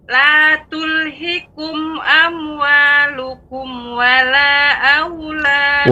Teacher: Mad jaiz munfasil dipanjangkan 4 harokat.